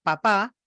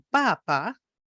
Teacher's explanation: la duración de la segunda sílaba que como pueden ver es mucho más larga